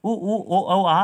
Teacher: वृत्ताकार स्वर ऐसे स्वर होते हैं जिनके उच्चारण में होठों का आकार गोल हो जाता है